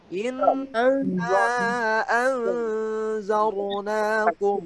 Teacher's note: Ro-nya ro tebal nih, jangan zar, jangan gitu ya.